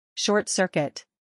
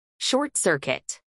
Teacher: acentuación en la segunda sílaba